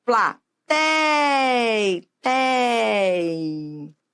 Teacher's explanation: a sílaba tônica é o tei